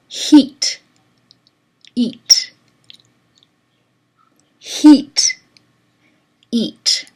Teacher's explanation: You have to anticipate the shapes that are coming up, and you have to get your mouth positioned before the sounds even start. So even for the H, which is coming from the glottis, the place of articulation is the glottis. The manner of articulation is fricative. That's just a plain H.